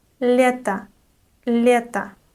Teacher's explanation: The unstressed O at the end of this word is pronounced like a.